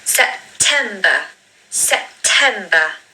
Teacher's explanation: The stress is on the second syllable. You really need to say that loudly.